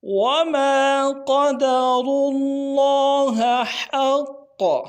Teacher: قاف موٹا کریں گے اور را کو موٹا کریں گے